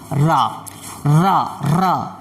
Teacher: लुठित या प्रकंपित, जिससे बोलने में थोड़ा कंपन पैदा होता है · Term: प्रकंपित व्यंजन